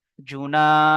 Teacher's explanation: আলিফ মাদাকে এক আলিফ পরিমাণ টান দিয়ে পড়তে হবে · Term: আলিফ মাদ্দা